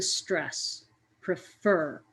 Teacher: I put a little bit more energy or sound into the last part of prefer. That is the stress, prefer.